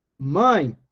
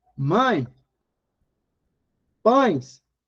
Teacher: Veja que o E cumpre o papel de semivogal.